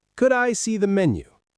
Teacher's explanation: The D and the I blend together. That's linking.